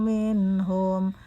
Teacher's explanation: nun mati bertemu ha, di situ hukumnya jelas, disebut izhar. Jadi tidak diperkenankan dibaca mendengung sekecil apapun.